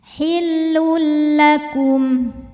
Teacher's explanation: maka tanwin dileburkan ke lam, hillul, tanpa disertai dengung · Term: idgham bila gunnah